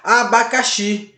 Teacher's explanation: Abacaxi não tem acento, mas você percebe que abacaxi, a sílaba mais forte é a xi, o xi.